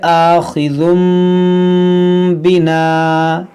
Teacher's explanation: یہاں پر دیکھیں تنوین کے بعد با ہے, تو یہاں پر کیا ہوگا اقلاب, یعنی اس تنوین کو ہم میم سے بدل کر پڑھیں گے. اس کو پڑھیں گے آخذم, اس میم کو ہم پڑھیں گے, اس کو پڑھیں گے آخذم بنا, اس طرح سے.